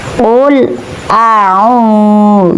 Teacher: Di sini terdapat bacaan mad thbingi berupa wawu mati sesudah harakat domah. Jadi cara bacanya panjang dua harakat.